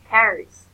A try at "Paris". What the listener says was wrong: I don't hear the letter S at the end.